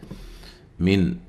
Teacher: نون ساکن کا اظہار ہے، غنہ نہیں کریں گے